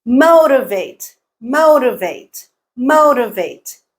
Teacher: MO is the stressed syllable